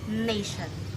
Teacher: The front and sides of the tongue contact the alveolar ridge anteriorly and laterally to obstruct the oral cavity.